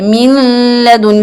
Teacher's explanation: اگر کوئی blind person سنے گا تو وہ سمجھے گا میم کے بعد صرف لام ہے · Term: مرجنگ